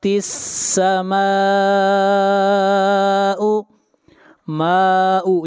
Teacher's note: ماء یہاں پر مد متصل ہے، اس مد کی مقدار 3 الف ہے، اور مد متصل وہ مد ہوتی ہے جہاں پر حروف مدہ کے بعد حمزہ اسی کلمہ میں ہو۔